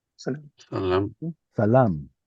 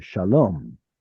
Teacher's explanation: So this long a sound in Arabic stayed, but in the Canaanite shift, which includes Hebrew, it becomes an O sound.